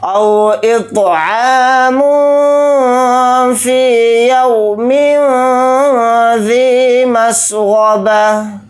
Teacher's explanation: تا کو ہا ساکن بنا کر پڑھیں گے حالت وقف میں